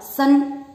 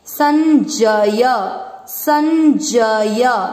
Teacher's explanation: इसे कहते हैं अनुनासिक, नासिका से यानी नाक से आधे न का उच्चारण, तो इसको बोलेंगे स और फिर आधा न।